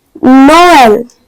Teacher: It sounds like each vowel pronounced separately. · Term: accent tréma